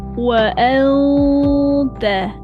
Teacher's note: [muzik] Wa anta ikhfa hakiki. Sembunyikan nun ke dalam huruf ta. Bersedia tolak belakang gigi atas tapi dia tak sentuh lagi.